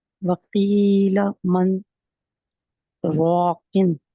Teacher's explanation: آپ نے را کو پر پڑھنا ہے کیونکہ را کے اوپر زبر ہے